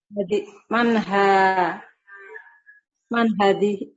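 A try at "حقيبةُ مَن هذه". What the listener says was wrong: Begitu Ibu Hakibatu man hadhihi. Itu Jawa ya. intonasinya Jawanya dengar. Hakibatu man hadhihi.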